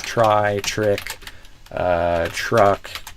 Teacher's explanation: when it's before T plus R, then I actually do a CH